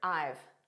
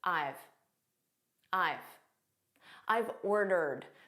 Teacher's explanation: This is a contraction of I have. So we say it as one word, I've. And it's a very unstressed pronunciation.